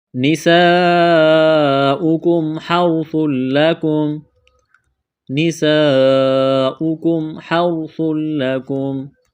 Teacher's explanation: سین میں سیٹی کی آواز پیدا کریں گے، سین کو باریک کرنا ہے